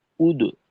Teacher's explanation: দালের উচ্চারণটা ঠোট গোল রেখে করব।